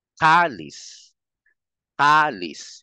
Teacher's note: Yung lis mahina na lang eh, di ba? Yung ka ang mas naririnig.